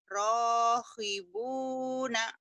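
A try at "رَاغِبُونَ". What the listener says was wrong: Rogi, bukan rohi. Orang jawab G-nya pasti ke ho. Rohibun, bukan rohibun, rogi. Sakit gigi, bukan sakit hihi. Sakit riri, rogibuna.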